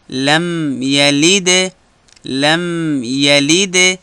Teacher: لم یلد د لام نرمي. لم پر میم باندې وخت تېرول، البته لږ وخت فقط شونډان سره وجنګوئ تر څو د میم آواز راوځي. لم یلد لم یلد یلد نرم.